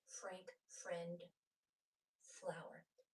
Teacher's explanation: my top teeth going over my bottom lip